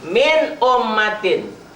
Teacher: Bisa dipahami bahwa yang namanya idhar tulisan dan bacaannya sama. Ditulisnya min, dibacanya juga min ummatin, tanpa harus dihentak dan didengung.